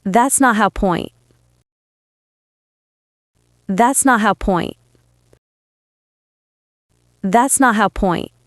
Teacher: the T sound almost disappeared and the words were linked together